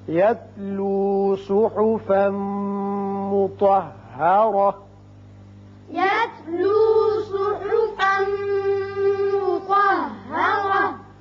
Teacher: یہاں صحفم ادغام بغنہ ہوگا، تنوین کے بعد میم ہے، تو پر پڑھیں گے اور را بھی پر ہوگا اوپر زبر ہے.